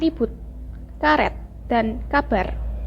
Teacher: menempatkan ujung lidah pada gusi gigi atas lalu udara dihembuskan keluar dengan menggetarkan ujung lidah itu fonem ini direalisasikan sebagai bunyi er baik bagi omset maupun sebagai